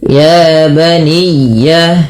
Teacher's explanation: dibaca dengan lin dengan melembutkan bunyi suara dan ditekan sedikit. Ya baniya ya tapi tidak putus. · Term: ya tasdid